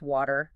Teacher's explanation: The W sound involves rounding the lips, almost like you're going to blow a kiss